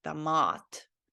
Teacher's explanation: In the last session, I think I pronounced this one wrong because I didn't know that in this word tomat, the O is also pronounced like ah because it doesn't have any emphasis on it. So it is meant to be said like damat, like an ah letter, damat.